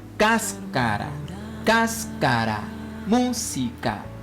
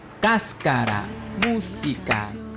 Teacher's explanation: Bueno, según el número de sílabas y la posición del acento es lo que marcará el ritmo de una palabra. Por eso, cáscara, al igual que música, tienen el mismo ritmo porque llevan el acento en la antepenúltima sílaba.